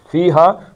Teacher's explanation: فی جتنا لمبا ہے اتنا ہی ہا ہے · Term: مد اصلی